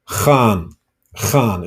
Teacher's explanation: The G sound you make by pushing the back of your tongue to your palate. All right. And then puff the air out.